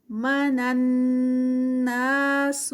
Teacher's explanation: نن پہ نون اور نون جو ہے وہ آپس میں مرج ہو رہا ہے، نون مشدد آگے تو غنہ ہوگا یہاں پر. نا جو ہے وہ 2 کاؤنٹس کا، سو یہاں پہ نو اسٹریچ.